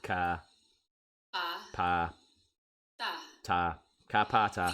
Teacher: These three consonants are pronounced without a puff of air after them. So they're like the K, P, and T in she's a nice woman.